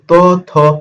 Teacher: এই ত, থ যখন আমরা উচ্চারণ করতেছি এই জিহ্বাটা কোথায় স্পর্শ করতেছে? দাঁতে স্পর্শ করতেছে। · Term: দন্তন্য